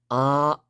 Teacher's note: right but the sound is very flat uh and it stops it has a starting point and a stopping point and my voice stays constant throughout that time